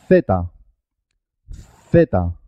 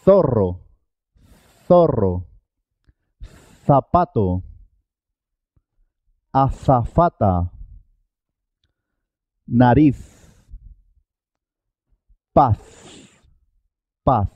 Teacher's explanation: La letra Z tiene un único sonido, pero es un sonido especial. Tenemos que poner la lengua en los dientes.